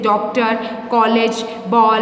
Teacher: अंग्रेजी भाषा में से हिंदी में ऐसे अनेक शब्द आए हैं जिनके उच्चारण में आ और ध्वनि का प्रयोग होता है। यह ध्वनि आ और ओ दोनों ध्वनि की मध्यवर्ती ध्वनि है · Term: आगत ध्वनि